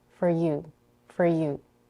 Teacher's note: For is reduced to fur with an R-collared schwa.